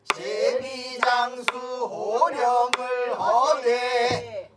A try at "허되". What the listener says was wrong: 허되 하지 말고 허되